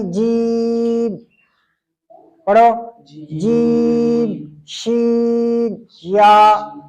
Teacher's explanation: مخرج جو ہے اس کا، جو جیم شین یا کا جو مخرج ہے، زبان کا وسط یا زبان کا درمیان جب بالمقابل اوپر تالو کی جانب اٹھے، اوپر جو تالو ہے وہاں پر لگے، زبان کا بیچ اوپر تالو کی طرف اٹھے تو وہاں پر جیم شین یا کی مخرج جو ہے وہ ادا ہو جائے گی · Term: وسط لسان